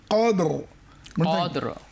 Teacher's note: এখানে দাল কলকলা হবে, আবার রকে মোটা করে ছাড়তে হবে।